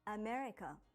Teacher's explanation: when you say America in English, you put stress on me and say it for longer than the other parts